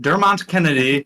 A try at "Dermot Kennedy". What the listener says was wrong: There's no N.